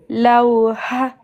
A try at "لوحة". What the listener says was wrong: Non. Ha, ok, mais il y a de l'air qui sort après. La lettre ha. Lawha. C'est pas deux fois la même lettre.